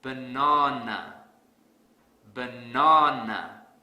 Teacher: I will stress the second syllable really hard